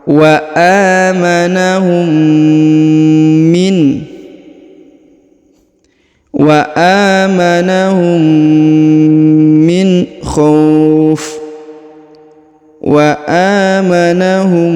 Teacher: huruf mim sukun bertemu dengan mim. Ditahan dan ditekan ya, ditahan dan ditekan 2 harokat. Wa amanahum min, wa amanahum min khauf, wa amanahum ya, ditahan dan ditekan, kemudian didengungkan 2 harokat.